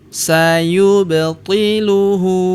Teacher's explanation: Kemudian sayubtiluhu sayub, huruf ba berharakat sukun kita pantulkan atau kita qolqolahkan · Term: qalqalahkan